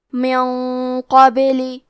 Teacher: کیونکہ قاف حروف التفخیم میں سے ہے اور غنہ میں اگلے والے حرف کا حکم لیتے ہیں تفخیم میں اور ترقیق میں، تو ہمیں یہ غنہ کو بھاری آواز میں ادا کرنا ہے. من قبلی کلمت قبل میں حرف القاف کو موٹی آواز میں پڑھیں گے